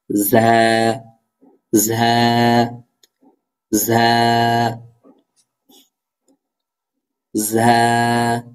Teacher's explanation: ঝা হরফটি কোথা থেকে উচ্চারিত হবে আমরা মাখরাজ জানি বা শিখেছি জিব্বার আগা সামনে নিচে দুই দাতের আগা সেখান থেকে ঝা উচ্চারিত হবে